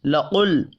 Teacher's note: क़ाफ हुरूफ़ मुस्तअलिया है, पुर पढ़ा जाएगा।